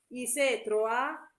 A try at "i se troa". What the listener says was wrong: no, non c'è scritto i setroa, c'è scritto i setroa. C'è l'accento sulla O.